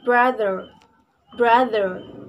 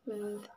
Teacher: Second, voiced palato alveolar approximant sound R. Next, voiced dental fricative sound th